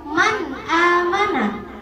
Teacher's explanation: Nah, si izhar halqi ini dibilang jelas karena dia nggak pakai gunnah zaidah. Gunnahnya cuma lazimah, gunnah yang jadi dasar, nggak ditambah jadi 2 harokat, 3 harokat. · nggak perlu dilamain gunnahnya, cukup 1 detik